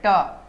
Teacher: आप ट बोलिए, मूर्धा पे भार पड़ेगा, ऊपर वाले पे